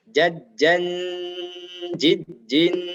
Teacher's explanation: Hati-hati ada tanwin lagi bertemu dengan jim, maka dibaca dengung yang lama.